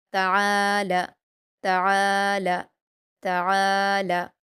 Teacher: ता पर हरकतें जल्दी पढ़ेंगे और आइन पर अलिफ मद्दा है दो हरकात खींचकर हलक से अदा करेंगे।